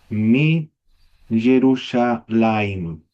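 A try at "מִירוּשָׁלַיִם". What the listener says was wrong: Claro, aquí no sería Y, porque ya no está el Y. Mirushalayim. No, si uno se pone a pensar, cambia harto la palabra. Mirushalayim. Pero cambia. Mirushalayim. Con la regla número 4.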